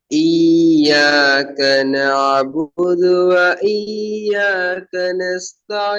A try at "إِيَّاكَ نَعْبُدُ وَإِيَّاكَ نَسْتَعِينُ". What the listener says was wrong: இந்த நஸ்தான் இல்ல, ஏன் கூட நீட்டினீங்க? அப்போ அலிஃபுக்கு மத்திர அலிஃப் வந்து நீட்ட மாட்டீங்க, யாக்கு சுகுனா நீட்டீங்க, அப்படியா?